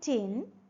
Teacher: the vocal cords do not vibrate during the production of T